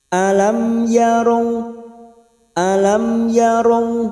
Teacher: Alam mim sukun bertemu ya idhar safawi, mim sukun dibaca jelas tanpa mendengung